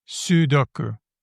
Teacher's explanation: So, I do believe that the first syllable is the one that gets the stress.